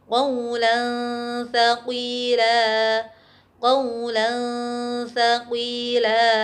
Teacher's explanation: Contoh bacaan ikhfa pada huruf tha misalkan, tanwin bertemu dengan tha, qawlan thaqila, qawlan thaqila. Tanwin masih tetap terdengar secara samar, kemudian siapkan perangkat bicara kita menuju ke huruf tha.